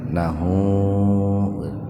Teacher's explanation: Mad silah qasir, ada huruf ha didahului huruf hidup, nunnya kan hidup, jadi hu-nya dibaca panjang dua ketukan